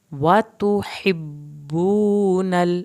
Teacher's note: وَتَأْكُلُونَ التُّرَاثَ أَكْلًا لَمًّا وَتُحِبُّونَ, ہا کو حلق سے پڑھیں, با کی شد پہ دیر لگائیں, واو ساکن کو کھینچیں